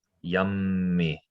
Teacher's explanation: you kind of hold that m a little longer